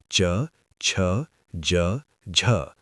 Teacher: स्पर्श संघर्षी। पहले स्पर्श फिर घर्षण